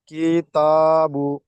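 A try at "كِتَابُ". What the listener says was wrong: কি টান হয়ে গেল আবার? কিতাবু। বু টান হয়ে যাচ্ছে। কিতাবু। কি টান হয়ে যাচ্ছে। দেখেন দুই দিকে হারাকাত রয়েছে, হারাকাতকে জলদি পড়তে হবে আপনাকে। কিতা, কিতা বলেন। পেশবু।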